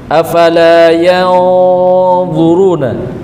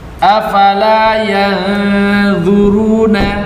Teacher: dan huruf dha itu kan huruf itbaq, huruf isti'la. Maka harus ada dengung yang tebal di situ.